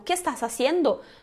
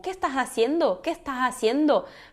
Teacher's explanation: Fica esse sonzinho aspirado, é um S que parece o som de R, às vezes o S é cortado nas palavras, então tem essa questão, mas tu não és obrigado a fazer esse som. · Tudo com som de S, o S sempre forte em espanhol. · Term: S aspirado